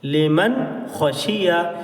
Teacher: تو یہ نون ساکن کی آواز ہے، میم نون زبر من، لام زیر لی، میم نون زبر من، لمن، خوا زبر خوا، شین زیر سی، خوشی، یا زبر یا، خوشیہ، لمن خوشیہ۔ تو نون کی آواز کو ہم بالکل ظاہر کر رہے ہیں